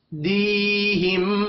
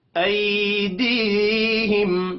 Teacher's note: बैन ऐ, ये भी यालिन है। दीहिम, या मद्दा है, दी, एक सेकंड इसको खींच कर पढ़ेंगे।